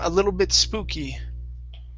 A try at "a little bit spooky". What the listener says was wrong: Good. Okay. Yeah. Everything else was good.